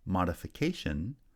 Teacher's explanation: the first syllable receives secondary stress and the placement of primary stress has shifted to the fourth syllable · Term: shifting stress placement